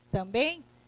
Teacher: uma letra tenho a outra letra aqui mas na hora juntei o m está apenas para nasalizar o vocábulo e formou o único som aqui eu vou dizer que eu tenho dígrafo o vocálico E · no final da palavra Eu tenho um ditongo nasal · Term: dígrafo vocálico